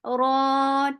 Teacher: Ra, 2 counts long, and ra is heavy. Whenever ra is with fatha or dhamma, it is long.